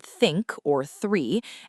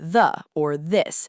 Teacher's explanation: In English, we have two th sounds. We have the voiceless th, as in the word think or three, and we have the voiced th, as in the word the or this.